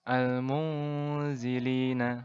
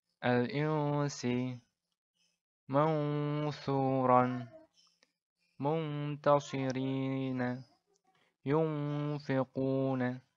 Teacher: cara membacanya adalah dengan cara samar-samar dan dengungnya dipanjangkan 2 harokat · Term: ikhfa hakiki